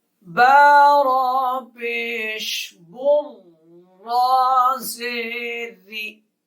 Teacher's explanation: اب را کے نیچے زیر ہے اس لیے را جو ہے وہ باریک پڑھا جا رہا ہے اور سخت پڑھا جا رہا ہے اس لیے کہ را کے اوپر تشدید ہے۔ با را کے ساتھ سختی سے مل رہا ہے، تشدید کی وجہ سے را باریک اس لیے ہو رہا ہے کہ را کے نیچے زیر ہے۔